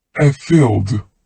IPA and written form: ə fiːld (a field)